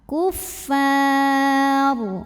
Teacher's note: ro-nya apabila berhenti disukunkan, dibacanya secara tafkhim, sebab ro yang disukunkan didahului baris fathah, maka bacanya tebal.